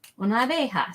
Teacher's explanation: we kind of Squish the A's together that's why there's not an extra syllable